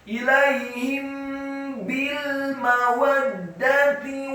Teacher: Tusirruna ilaihim ilaihim bi, mim yang sukun bertemu dengan huruf ba, hukum bacaannya adalah ikhfa syafawi. Apabila ada mim yang sukun atau mati bertemu dengan huruf ba, maka dibaca ikhfa atau didengungkan.